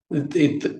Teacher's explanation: நம்ம நுனி நாக்கு வந்து வெளிய வரும் மேல் பல்லும் கீழ் பல்லும் கொஞ்சம் அதை லைட்டா பைட் பண்ணனும் அதை கடிக்கிற மாதிரி இத் இத்